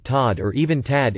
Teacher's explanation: the second half of the diphthong is often omitted